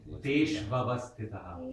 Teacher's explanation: U before A becomes Va. Like E before A becomes Ya, like that. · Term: Sandhi rule